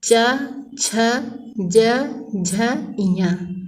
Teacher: ये सब च वर्ग के अंतर्गत आते हैं और इनका उच्चारण स्थान तालु है